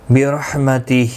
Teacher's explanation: برحمتہ را زبر کی وجہ سے پر پڑھا جائے گا. ہا کے نیچے کھڑی زیر ہے، ایک الف کی مقدار کے برابر کھینچ کر پڑھیں گے. نون ساکن کے بعد یرملون کا یا ہے، ادغام مع الغنہ ہوگا.